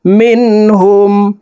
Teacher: زر من নুন সাকিনের পরে ইজহারের হরফ হা আসছে এই কারণে এই নুন সাকিনকে গুন্নাহ ছাড়া স্পষ্ট করিয়া পড়ব।